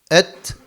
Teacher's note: harfin mahreci didir mesela t harfi et dediğimiz zaman dilin karşısındaki dil ucunun karşısındaki üst damakta son bulur ve orası t harfinin çıktığı yerdir yani t harfinin mahreci alfabemizdeki